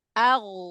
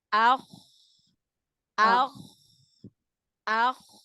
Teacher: huruf Gin lebih turun lebih dalam dibanding dengan huruf k